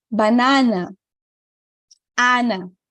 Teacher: Sempre com esse A bem aberto e não nasal.